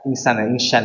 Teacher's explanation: sin jangan sampai berubah jadi syin ya